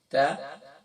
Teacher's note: زبان کی نوک اور ذرائع علیہ کی جڑ سے ادا ہوگا، tip of the tongue and the roots of upper front teeth ، تا pronouncing from top of the tongue and the inner